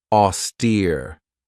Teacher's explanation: This has 2 syllables and the stress is on that second syllable with that long E sound, austere. If somebody or something is austere, it means that they're very severe in their manner.